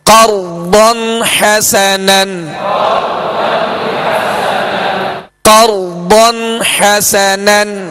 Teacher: تو ضاد کو پر کرتے ہوئے ہونٹوں کو گول نہیں کیجیے گا